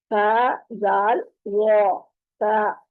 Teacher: ये तीनों हरूफ जुबान की नोक को ऊपर के सामने वाले दो दांतों के अंदरूनी किनारे से लगाकर अदा होते हैं। फर्क सिर्फ इतना होगा कि सा और जाल की आवाज बारीक और वा की आवाज मोटी होगी